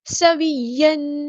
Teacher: سین کی سیٹی واضح کریں گے. اس یا میں بھی نبر ہوگا.